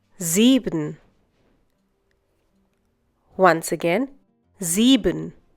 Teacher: whenever the letter S occurs at the beginning of a German word and is followed by a vowel, it is pronounced as if it were the English Z